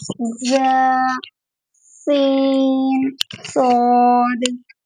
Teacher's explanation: ان 3 حروف ز، سین، صاد کو ادا کرتے وقت سیٹی کی طرح تیز آواز نکلتی ہے، اس لیے ان حروف کو ہم حروف مصفیہ یعنی سیٹی والے حروف کہتے ہیں، یعنی کہ 3 حروف میں سیٹی کی آواز آتی ہے ادا کرتے وقت، جیسے ز، سین، صاد۔